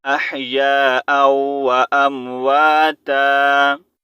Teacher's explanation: यहाँ पर वक़फ़ की सूरत में हमने ता पढ़ना है